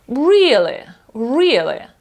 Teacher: наголос іде на перше і А ото друге е майже проковтується